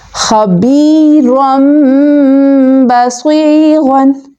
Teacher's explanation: نون ساکن اور تنوین کو میم سے بدل کر اخفا کر کے پڑھیں گے، یعنی غنہ کر کے پڑھیں گے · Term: اقلاب